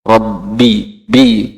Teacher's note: baknya itu jangan terlalu ada banyak udara yang keluar.